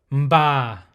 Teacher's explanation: there should be a nasal sound and then from the lips